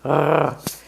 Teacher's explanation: the sound resh in Hebrew is made in the back of your throat. It's a rolling R, like in Spanish, r, but you bring the roll to the back of your throat, r, or like a dog growling, r.